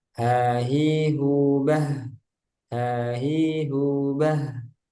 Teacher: Lumazah H-nya dilatih agar mengalir ketika sukun